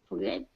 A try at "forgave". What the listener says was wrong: Yeah, I think you said forgive, which is fine. Just a small little thing.